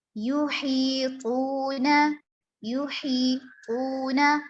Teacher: ہا حلق سے ادا ہوگا، حلق کے درمیانی حصہ سے